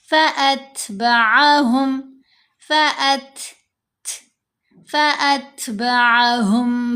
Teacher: ت ان حروف میں شامل ہے۔ ہم نے فأت ت کی ساؤنڈ میں نہیں پڑھنا، تھ کی ساؤنڈ میں پڑھیں گے۔